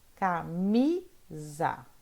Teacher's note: O mi é a sílaba forte.